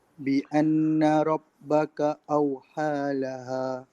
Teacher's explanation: Ha yang pertama nipis, ha yang kedua tebal sikit.